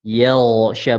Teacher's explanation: Huruf ghain ketika dia sukun, ya sebelumnya fathah atau dhammah dia harus dibaca tebal. Yaghsha bukan yaghsha.